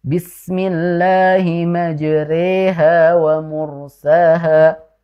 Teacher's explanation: huruf ro yang berharakat fathah miring ke kasrah atau kita sebut dengan imalah